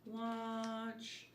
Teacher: the sound o it's low open mouth